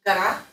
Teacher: Because pre-stress O pronounced like A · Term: vowel reduction